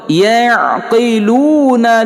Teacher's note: lu waw sukun mad asli panjangnya 2 harakah lagi